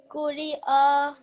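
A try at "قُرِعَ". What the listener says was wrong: So on fatha, how many seconds are we doing it on fatha? How many seconds are we elongating? 2 seconds? Are you sure it's 2 seconds? Just plain fatha. Remember, 1 second.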